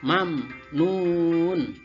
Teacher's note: Mati bertemu dengan nun, lihat itu situ ya. Mim mati bertemu dengan nun. Maka ada bacaan izhar syafawi. Maka cara bacanya harus jelas ya.